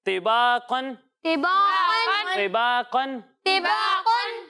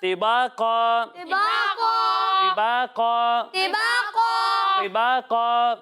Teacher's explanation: 2 زبر کی تنوین، 2 زبر کی تنوین ہے، اور اس کے بعد طا وقف کی علامت ہے۔ اگر آپ یہاں پر وقف کریں گے تو 2 زبر کی تنوین کو الف سے بدل دیں گے